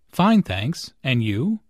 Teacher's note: Notice the rising intonation on and you. This shows that is interested in what Jane has to say.